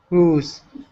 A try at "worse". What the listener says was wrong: Worse. Get an R in there. Worse.